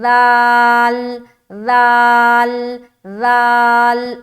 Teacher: سامنے کے جو اوپر والے دو دانت ہیں نا جو ہنستے ہوئے نظر آتے ہیں اسے کہا جاتا ہے ثنایا علیہ۔ اس کے کنارے پر زبان کی نوک کو لگانا ہے، زبان کی نوک ہلکی سی باہر ہوگی